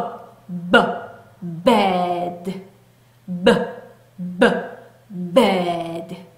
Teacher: 유지되지 않으면서 성대에만 울리는 울리는 소리였죠